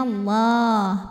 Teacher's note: Lam pada lafaz Allah atau lam jalalah dibunyikan secara tafkhim karena huruf sebelumnya berbaris fathah, maka dibacanya tebal. Bunyinya Allah, pangkal lidah ngangkat.